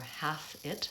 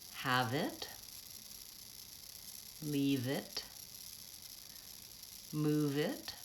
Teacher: I'm gonna run those two words together and link them the V is almost jumping on to the I of it